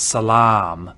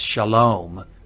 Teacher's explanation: If you know the Arabic word for peace, it's salam. And that long ah in Arabic is now an O in Hebrew